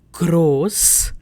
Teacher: if I take gross, then you're hearing only O sound, which is one vowel sound.